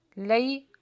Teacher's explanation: हुर्फ लीन है, जल्दी पढ़ा जाएगा नरमी के साथ